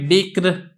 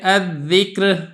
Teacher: ان دونوں صورتوں میں اگر آپ غور کریں گے تو میں را کو باریک کر کے پڑھ رہا ہوں